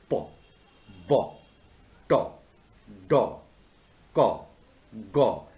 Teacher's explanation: we are stopping the air and then we are allowing it to go abruptly, very quickly. So the way these sounds are produced, this manner is known as stops.